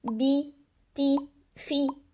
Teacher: हम अपने लिप्स को इतना ज्यादा स्ट्रेच कर लेते हैं कि वो बिल्कुल ऐसे लगता है जैसे हम स्माइल कर रहे हैं तो स्माइली फेस आपने नहीं बनाना क्योंकि उससे क्या होगा उससे